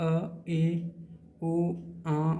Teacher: जब आप अ ए ओ आ बोलते हो तब अर्ध मुख द्वार खुलता है